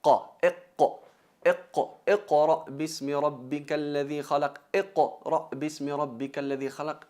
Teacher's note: empieza desde la entrada de la lengua, el fondo de la lengua, tocándolo con la parte superior blanda al paladar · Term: qaf